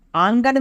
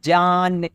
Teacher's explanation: आंगन में जो है बाद वाला नून भले ही नून ज़ाहिर है, लेकिन पहले नून की आवाज़ नाक से आती है, ये नून गुन्ना की मिसाल है।